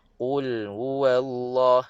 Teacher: Ha keluar daripada pangkal tekak, makhraj yang paling bawah. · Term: bunyi angin